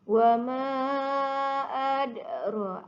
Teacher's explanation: Dalnya ada lantunan di situ. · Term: qalqalah